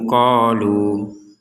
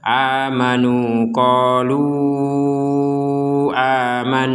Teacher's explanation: berhenti di qolu maka kembali kepada panjang awal yaitu dua harakat amanu qolu dua harakat namun ketika disambung menjadi panjang